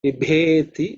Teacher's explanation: this bha is the fourth letter in the pa varga. That's aspirated one, otherwise others are not aspirated.